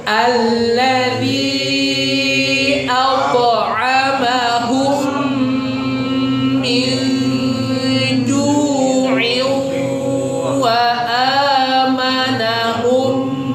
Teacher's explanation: Ya, tanwin bertemu dengan waw kan ya. Idgham bi gunnah. Melebur dengan dengung.